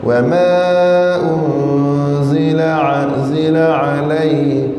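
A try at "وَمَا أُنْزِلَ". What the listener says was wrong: Bacaan ini tidak fasih bagi huruf zai. Huruf zai mesti kena baca zi zi zi za.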